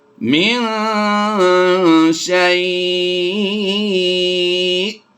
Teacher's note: دو زیر کی تنوین کو ہم نے جزم سے کنورٹ کرنا ہے وقف کی وجہ سے، تو ہم نے حروف لین کے بعد سکون عارضی پایا تو مد لین عارض ہوگی، تو ہم اس کو یہاں پر مد کر کے پڑھیں گے۔ من شیء، حمزہ ساکنہ ہوگا تو ہم نے یہاں پر جھٹکا بھی دے کر پڑھنا ہے